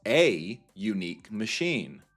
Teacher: because unique actually starts with a y sound